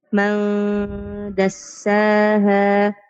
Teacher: مخفى عند الدال المفتوحة بغنى حركتين